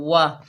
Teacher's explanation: अलैकुम, वाव के ऊपर ज़बर है, बगैर खींचे पढ़ेंगे। वाह, वाव को होंठों की गुलाई से अदा करेंगे।